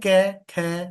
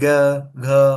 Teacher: क ख तो कंपन नहीं है फिर ग घ अंगा तो वहां पे कंपन हो रहा है